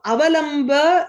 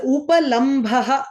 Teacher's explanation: that is the bha is mahaprana there